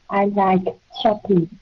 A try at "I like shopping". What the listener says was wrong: Now, cái chữ like mình cắt ngắn nó lại. Cái đó âm k, nó âm k, right? Mình cắt ngắn nó lại.